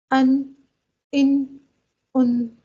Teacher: جب زبان کا یہ کنارہ اٹھ کر ان 6 دانتوں کے مسوڑوں سے ان 6 دانتوں کی جڑوں سے لگ جاتا ہے، تب جا کر نون ادا ہوتا ہے